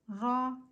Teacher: را کے اوپر زبر ہونے کی وجہ سے ہم را کو پر پڑھیں گے، را مطلب موٹا پڑھیں گے